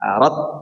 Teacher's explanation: Yang mengalir itu nafasnya, huruf ta itu yang mengalir nafasnya, bukan suaranya. Beda antara nafas dan suara ya.